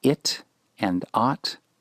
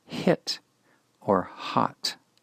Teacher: these begin with h and there is a smooth breath expulsion of breath not a constriction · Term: smooth breathing